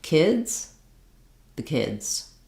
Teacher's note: Kids was very long and the was very short.